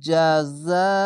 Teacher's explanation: কাজালিকা, খারজা বাড়ি এক আলিফ টেনে পড়বেন, কাব জবর কাজাল, খারজা জা, কাজাল আমজালি, কাজালি, কাব জবর কা, কাজালিকা, সরি জাযাউল, এখানে 4 আলিফ টেনে পড়বেন, মোটা চিহ্ন মাদ্দে লাজিম 4 আলিফ টেনে পড়বেন। জিম জবর যা, যা জবর যা, এই আলিফের উপর আছে মোটা চিহ্ন, তার জন্য জিম জবর যা, যা আলিফ জবর যা, হামজা লাম পেশ উল, জাযাউল কাফিরিনা, এই না না বলে কাফিরিন, এখানে থামতে হবে, আয়াত আছে, তার জন্য শেষ অক্ষরে সাকিন দিবেন।